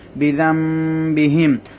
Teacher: নুন সাকিনে পরে বা আসার কারণে নুনটা মিম হয়ে গেল